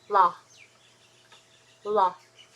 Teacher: you want to put the tip of the tongue against upper teeth and make sure that the your Tong your tongue is relaxed